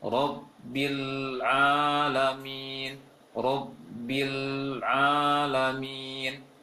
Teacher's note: Ketika membaca lam sukun setelahnya ada ain, itu hati-hati jangan sampai terpantulkan.